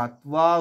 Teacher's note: তয়ের সঙ্গে ওয়া, অর্থাৎ দাঁতটা ঠোঁটে এসে লাগবে।